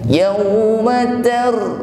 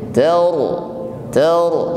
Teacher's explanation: ra sukun dibaca tebal ya, tetap ada getarannya taur ya, namun getarannya di sini tebal, bukan ter.